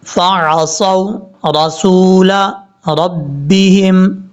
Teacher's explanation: صاد حروف مستعلیٰ میں سے ہے، پر پڑھا جائے گا. صاد کو جب واو سے کنیکٹ کریں گے تو واو لمبا نہیں کریں گے، یہ واو لین ہے، شارٹ کٹ پڑھا جائے گا.